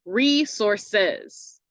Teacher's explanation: So we have a long syllable, a short syllable, and then a long one at the end.